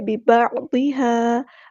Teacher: عین کو وسطی لیکن مڈل تھروٹ سے ادا کرنا ہے